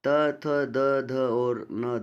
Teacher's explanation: त, थ, द, ध और न दंत्य व्यंजन है